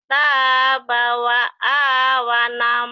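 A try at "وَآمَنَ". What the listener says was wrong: Wa amana. Wa amana bukan wa awana. Wa amana. Wa amana. Terbalik.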